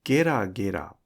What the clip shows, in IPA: geragera